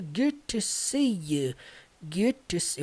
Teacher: esse good, ele junta com o to, ficando good to see you